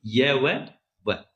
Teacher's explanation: वे व्यंजन जिनका उच्चारण करते समय हवा बिना संघर्ष के बाहर निकल जाती है। संघर्षहीन व्यंजन कहलाते हैं।